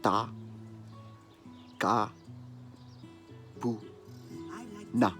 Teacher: it's all short vowels. No stressed vowels there, no long vowels.